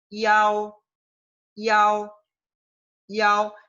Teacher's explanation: La I es corta y después viene AO, que es donde recae el énfasis